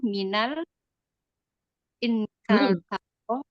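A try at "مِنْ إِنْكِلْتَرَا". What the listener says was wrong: Sukun, nunnya sukun.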